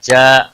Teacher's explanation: جا الف مدہ ہے ایک الف کے برابر کھینچ کر پڑھیں گے